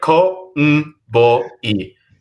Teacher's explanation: when you romanize that nasal sound n before a plosive, in this case the B in in bat, it turns into an M